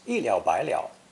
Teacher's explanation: this phrase is an example of three third tones in succession notice that the middle character changes to second tone the others remain unchanged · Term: 3 third tones in succession